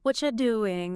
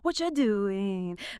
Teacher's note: The R gets swallowed. The U becomes yah or cha.